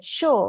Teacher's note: So in British English, we don't pronounce the R